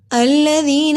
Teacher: ذال پہ سٹی کی آواز نہیں آتی۔ ذال کو ادا کرنے کے لیے زبان کی نقطہ تو کنارے سے لگائیے۔ ذی کو لمبا کیا جزم والی یا سے پہلے زیر حروف مد الف کے برابر لمبا ہوگا۔